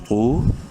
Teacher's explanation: واو مدہ ہے، تو کو ایک الف کے برابر لمبا بھی کریں گے